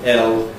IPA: l